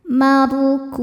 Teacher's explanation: ra dibaca tafkhim karena sebelumnya fathah, ra ditebalkan. Markum, saat berhenti kum hukumnya mad arid li sukun karena mad tabi'i bertemu dengan huruf yang disukunkan karena waqaf.